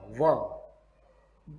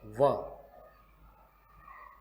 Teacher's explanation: ऊपर के दांत और नीचे के ओठ से ही व बोला जा सकता है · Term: दंतोष्ठम